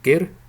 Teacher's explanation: It's a semi-voiced G. It's somewhere halfway between a K and a G. It's not fully voiced, but only a semi-voiced G sound. For example, like the G sound in gir, which means yurt, felt tent, gir.